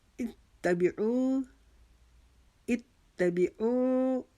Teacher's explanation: او کو ہم ایک الف کے جتنا کھینچیں گے